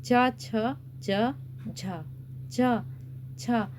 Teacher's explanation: देखिए जीभ बहुत ज्यादा तालू से टच हो रही है बोलने पर। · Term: तालव्य